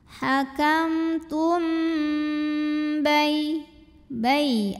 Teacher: karena mim sukun menghadapi huruf ba, maka mim sukun dibaca dengan dengungan, jadi tahan dulu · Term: ikhfa syafawi